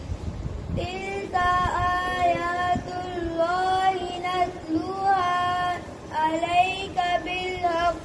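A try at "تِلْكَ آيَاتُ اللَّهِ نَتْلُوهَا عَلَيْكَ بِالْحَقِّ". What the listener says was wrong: आपने नतलूहा जल्दी नतलू ऐसे वाव को लंबा करें।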